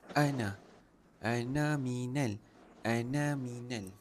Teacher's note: Okey, yang ni fqong baca dua harakat ana. Okey, yang na tu satu harakat sahaja. Bukan dua harakat.